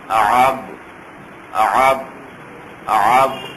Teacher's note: عین کی آواز حلق کے درمیان سے ادا کریں گے